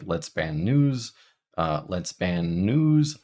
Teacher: I'm holding that n I'm not pronouncing it twice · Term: lengthen